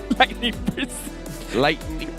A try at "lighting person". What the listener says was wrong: Lighting person, not lightning. Lighting.